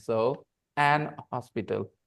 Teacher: an Hospital an hospital because in some dialects H is silent in some dialects of English H is always silent when it is at the beginning